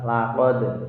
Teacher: bacaan qalqalah sugro di mana dal berharokat sukun asli tidak karena waqaf, yaitu bacanya agak kecil sedikit qalqalahnya